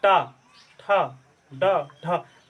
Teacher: जीभ हमारी थोड़ी सी फोल्ड होती है और ऊपर दांत के अंदर जो उठा हुआ थोड़ा सा भाग है, उभरा हुआ, वहां जाके टच करता है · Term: मूर्धा